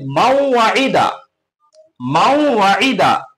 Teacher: মান ওয়াইদা পড়া হবে না, বলকে ওয়াওয়ে তাসদিদ লাগিয়ে দিতে হবে, আর পড়া হবে মাওয়াইদা, মাওয়াইদা।